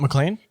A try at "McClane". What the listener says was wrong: It's McLean. You keep saying McCain.